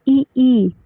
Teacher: ऐसे स्वर जिनका उच्चारण जीभ के आगे भाग से किया जाता है। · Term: अग्र स्वर